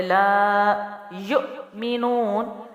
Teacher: لام پہ زبر ہے تو ایک الف لمبا کریں گے. لا یؤمنون، حمزہ ساکنہ ہے اور یا پہ پیش ہے تو ملا کے جھٹکا ہوگا، واو اضافی ہے یہاں پر.